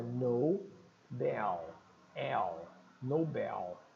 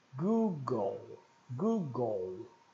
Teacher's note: O L não vai ter som de U no inglês. Cuidado que o L não vai ser Nobel, né?